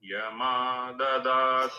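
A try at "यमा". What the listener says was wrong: மா மேல போயிட்டு மா கீழே இருக்கணும். யமா அடியில அனுதாத்தா யூ ஆர் டூயிங் யமா மேல போகக்கூடாது.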